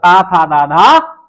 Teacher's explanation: ता वर्ग जो होता है वो दंत होता है